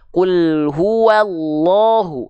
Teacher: maka lamnya dibaca dengan tebal ya yaitu seperti vokal o